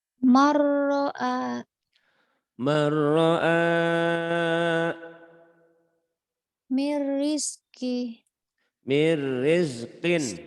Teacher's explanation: Idgham bila gunnah. Dimasukkan, dileburkan tanpa dengung.